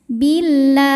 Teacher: Bil lam jalalahnya dibunyikan secara tarqiq sebab didahului harokat kasrah, maka lam tipis.